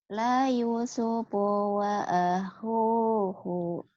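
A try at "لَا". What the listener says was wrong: lanya kan panjang. Lanya panjang. Lanya panjang. Lanya panjang.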